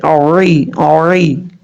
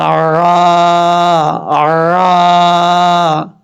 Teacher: یہ گلے کا جو درمیان ہوتا ہے نا، درمیان میں جو حلق ہے اس حلق سے جو ہے یہ عین ادا ہوتا ہے. عین اور ہا اسی جگہ سے ادا ہوتے ہیں، ایک سائڈ سے عین، دوسری سائڈ سے ہا.